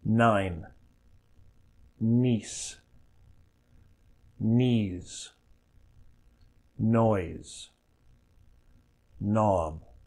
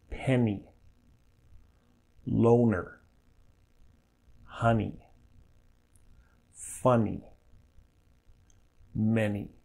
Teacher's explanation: /n/ is made by blocking the mouth with the tongue, not with the lips, so that air is forced out through the nose.